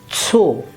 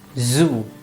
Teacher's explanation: Doppel O is O. It's just a long O, and not, it doesn't become U as in English.